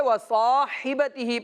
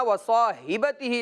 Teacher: اس کو حا کے بجائے ہا نہیں پڑھنا، وَصَاحِبَتِهِ نہیں پڑھنا، بلکہ وَصَاحِبَتِهِ پڑھیں گے۔